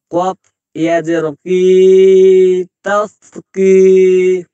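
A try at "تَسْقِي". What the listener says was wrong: এটা কাফ করে দিলে কেন? কফ আছে তো।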